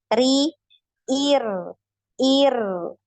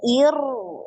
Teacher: Jadi diturunkan pangkal lidahnya. Ri tipis.